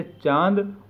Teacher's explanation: अनुनासिक का उच्चारण मुख और नासिका दोनों से होता है